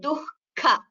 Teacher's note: ದ ವಿಸರ್ಗ should be heard and it is heard as ಹ it is not heard as ಕ there is no ಕ in between it is ದುಃಖಂ so I